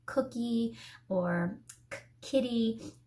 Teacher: we make it at the back of our tongue the back of our tongue goes up and touches the back of our throat and that sound comes from K or C but again when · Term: back sound